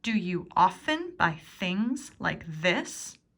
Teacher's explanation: what are the important words in this question that you need to stress probably often because it's narrowing down when it occurs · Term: rhythm of English